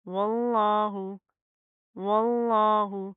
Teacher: یہاں پر بھی لفظ اللہ کا کیا رول ہے کہ ہم لفظ اللہ کو موٹا پڑھیں گے کیوں کیونکہ اس کے ماقبل واو کے اوپر زبر آ رہی ہے